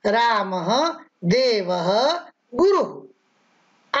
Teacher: विसर्ग, इसका उच्चारण किंचित ह की तरह किया जाता है। इसका भी प्रयोग स्वर के बाद ही होता है।